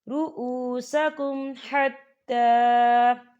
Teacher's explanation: یہاں میم ساکن ہے اور میم ساکن کے بعد ح آ رہا ہے تو یہاں پر اظہار شفوی ہوگا اور ہم اسے بنا غننے کے پڑھیں گے